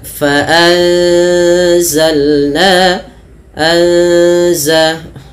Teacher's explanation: ada nun mati bertemu za, kita namakan dengan ikhfa. Cara membacanya yaitu huruf nunnya samarkan kepada huruf zalnya langsung.